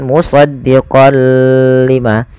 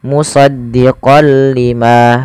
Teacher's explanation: Idgham artinya memasukkan, bila gunnah tanpa disertai dengan gunnah. Jadi kita hanya memasukkan saja tanwinnya kepada huruf lam dan tidak ditahan. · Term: idgham bila gunnah